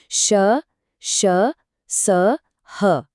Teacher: जब हम इन अक्षरों को बोलते हैं तो मुंह से हवा रगड़ खाकर बाहर निकलती है। जिससे एक गर्म और सीटी जैसी आवाज पैदा होती है। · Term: उष्म व्यंजन